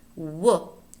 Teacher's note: the first one is that bilabial voiced semi vowel whoop which involves lip rounding